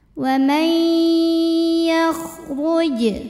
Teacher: Karena ada nun sukun yang menghadapi huruf ya, maka nun sukun masuk ke ya. Wa may disertai bunyi dengung, tahan. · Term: idgham bi gunnah